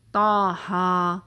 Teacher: جیسے تا ہا، تو اس میں تا اور ہا، ٹھیک ہے، سورہ طٰہٰ کے بگننگ میں آتے ہیں دونوں ورڈ حروف المقطعات، تو تا ہا دونوں کو 2 حرکت، بس اس سے زیادہ نہیں لینا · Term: مد طبیعی